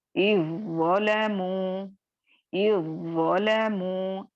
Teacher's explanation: कैसे करेंगे, इज़्ज़लमू, इज़्ज़लमू, हम ये नहीं कह रहे हैं इज़्ज़लमू, इज़्ज़लमू, जाल नहीं लाएंगे, ठीक है। जाल सिर्फ रहेगा, उसको पढ़ा नहीं जाएगा, बल्कि ज़ में मर्ज हो जाएगा और जाल की सिफत मुकम्मल तौर पर खत्म हो जाएगी और सिर्फ हम ज़ मुतहर्रिक को अदा करेंगे या ज़ मुशद्दद को अदा करेंगे। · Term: इदगामे ताम